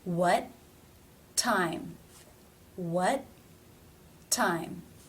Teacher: what well the tea is at the end of the word it is not part of a consonant cluster and it does not link to a next word that begins with a vowel or diphthong therefore it must be a stop